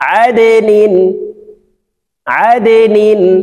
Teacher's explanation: আইন দাল জবর আদে নুন দুই জের নিন আদে নিন। দাল নিচের দিকে ধাবিত করে কলকলা করে উচ্চারণ করতে হবে